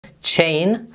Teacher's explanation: it begins with this t, sh combination, which is ch, ch. We then have the diphthong, a, che, and then n, chain.